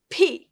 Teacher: it's p with your two lips